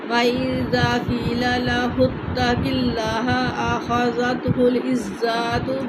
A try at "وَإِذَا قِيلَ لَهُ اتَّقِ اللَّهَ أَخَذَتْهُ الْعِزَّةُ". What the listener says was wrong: نہ زا کو لمبا نہیں کرنا، کھڑی زبر توڑی ہے. دیکھیں وَإِذَا قِيلَ لَهُ اتَّقِ اللَّهَ أَخَذَتْهُ الْعِزَّةُ بِالْإِثْمِ. أخذته العزة پڑھیں.